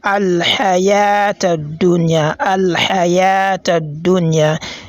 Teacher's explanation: The ya on here on the word al-haya, it has been prolonged for only the duration of 1 second, which is another al-madul asli.